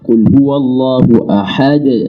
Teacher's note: Ya, ahad makhrajnya dal itu ujung lidah dengan pangkal gigi seri depan atas. Tapi sifatnya harus qalqalah, harus pantul.